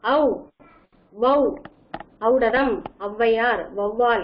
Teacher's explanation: அவ் என்ற எழுத்து தனக்குரிய 2 மாத்திரையிலிருந்து குறைந்து ஒலிப்பது என்று கொடுக்கப்பட்டுள்ளார்கள். குறைந்து 1 மாத்திரை அளவில கூட ஒலிக்கும்.